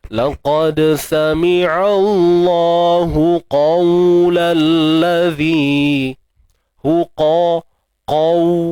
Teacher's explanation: Qaw. Kita kena muncung bibir sebab kita matikan waw tu. Kan waw lin tu, dan makhraj waw kita pun tahu kan, bibir mulut.